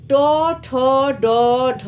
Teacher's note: বর্ণ ট ঠ ড ঢ মূর্ধন্য এটা এগুলি হচ্ছে মূর্ধন্য বর্ণ সবই মূর্ধার সাহায্য লাগে